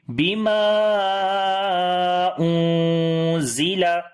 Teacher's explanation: زا کو باریک پڑھیں گے صفت استفال کی وجہ سے · یہاں پر زا باریک ہے تو نون ساکن بھی باریک ہوگا۔ اگر یہاں پر موٹا حرف ہوتا تو نون ساکن بھی موٹا پڑھا جاتا، یعنی اخفا موٹا ہوتا، اور ابھی یہاں پر اخفا باریک پڑھیں گے۔